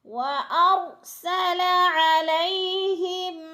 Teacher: عین حروف حلقی میں سے حلق سے نکالنا ہے